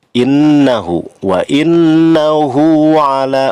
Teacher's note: hu dibaca panjang 2 harokat termasuk mad tabi'i